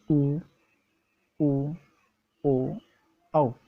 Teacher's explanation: एक तो है वर्ताकार, दूसरा है अवर्ताकार। वर्ताकार में जब बोलते वक्त आपका मुंह की जो आकृति होती है वो गोल बन जाती है